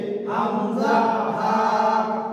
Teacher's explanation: এক নাম্বার মাখরাজ হলকের শুরু হইতে